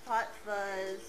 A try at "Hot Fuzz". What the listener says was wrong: No, you said Pot Fuzz.